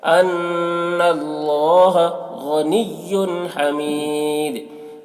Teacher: غین کو پر پڑھیں گے، غین حروف مستعلیہ میں سے ہے